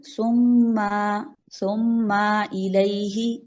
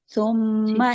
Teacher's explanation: छोड़ना है जल्दी से आपने मीम को, आवाज को खींचे नहीं जाना।